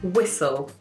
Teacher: We do pronounce the L, but as if the L is at the end of the word. So this word is just spelled very, very strangely compared to how we say it.